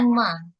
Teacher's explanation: Nah, saya ada dengar mimnya itu dibaca panjang. Harusnya nggak perlu dibaca panjang.